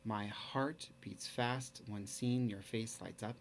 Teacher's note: you're gonna find five of those feet the unstressed stressed